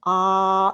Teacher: the whole tongue is pulled down as far as possible, but because the tongue is so massive, we have to open the jaw a little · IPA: /a/